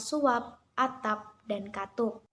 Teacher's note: Bila berada pada akhir kata, fonem P tidak diucapkan secara lepas. Bibir kita masih tetap tertutup rapat waktu mengucapkan bunyi ini. Misalnya pada kata suap, atap, dan katup.